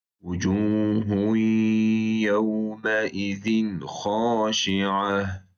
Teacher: İzhar olaraq açıqca, yəni nunu tutmadım, tənvini tutmadım deyək.